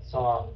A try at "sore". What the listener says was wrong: Không có đọc âm y phía sau. Sore. Chứ không phải là sore nha. Sore.